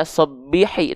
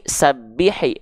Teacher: huruf Sin adalah ketika fathah dibaca dalam keadaan yang tipis karena bukan vokal O yang dihasilkan